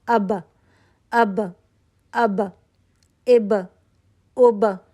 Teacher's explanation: आपने अपने दोनों होठों को कुत से बंद किया और फौरन वापस खोल दिया। · قلقلہ کی کوالٹی ہے، ٹھیک ہے، آواز پلٹ کر واپس آ رہی ہے۔ اب آپ مخرج پہ گئے، آپ نے اپنے دونوں ہونٹوں کو قوت سے بند کیا اور فوراً واپس کھول دیا۔ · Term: कलकला